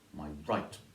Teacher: right has the stress that is just one unstressed syllable before it